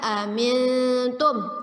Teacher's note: nun sukun bertemu dengan ta. Ya, ikhfa, kita baca samar ditahan 2 harokat